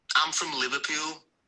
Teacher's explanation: the you sound is very distinctive and fairly elongated in words that ends in L